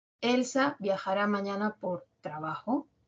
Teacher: puedo cambiar la entonación final, el tonema final, hacerlo ascendente y por lo tanto la oración ya no va a ser enunciativa, sino interrogativa.